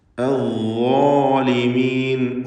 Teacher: ളാഇനും അതിൻ്റെ ദീർഘാക്ഷരമായ അലിഫിനും തഫ്ഖീമാണ്. ളാ എന്ന് തടിപ്പിച്ച് പറയുക.